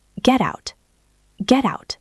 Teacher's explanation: because that T is now between the e of get and the a of out, it becomes soft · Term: flap T